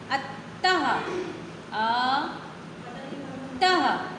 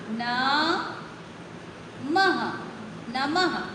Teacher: विसर्ग उच्चारण में हा की ध्वनि निकलती, जैसे आहा, हा आया ना।